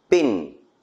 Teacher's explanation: P is a voiceless bilabial plosive.